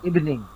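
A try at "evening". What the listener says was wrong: ইভিনিং, ইভিনিং এখানে হসন্ত হয়ে যাবে ভয়ের মধ্যে। ইভ, হসন্ত। হুম, ইভি হবে না, রসিকার হবে না।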